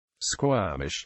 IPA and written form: ˈskwɔːmɪʃ (Squamish)